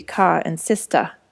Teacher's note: Speakers drop word final R's too